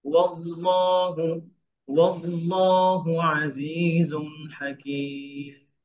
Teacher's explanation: ওয়াওকে ওয়াওকে পাতলা করে, যেন ওয়াল্লাহ মোটা, ওয়াও মোটা না হয়, হেভি না হয়।